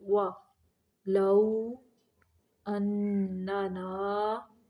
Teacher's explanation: وا ہونٹوں کو گول کرنا ہے، دانتوں کا استعمال نہیں کرنا واو کی ادائیگی کے وقت